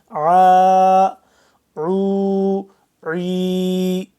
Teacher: عین یہ سختی سے کھینچ کے پڑھیں گے، اچھا گلے سے نکلے گا، سختی سے ذرا کھینچ کے۔